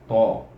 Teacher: Cuba buat ta, iaitu kita pada gusi tu ta, kemudian dal, dan kemudian yang ketiga ialah huruf to. Tebal sikit bunyinya, to, itu rapat sikit lidah tu.